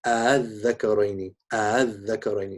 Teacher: So you don't say al-dhakaraini bitahqiq al-hamzatain, but the second one is pronounced closer to an alif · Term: tasheel